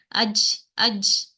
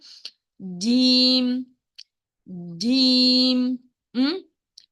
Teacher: The middle tongue is touching straight opposite of upper palate.